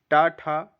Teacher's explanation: मुर्धा का उच्चारण स्थान है वह है ट वर्ग